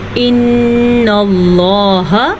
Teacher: نون کو غنے کے ساتھ پڑھیں گے کیونکہ نون کے اوپر شد ہے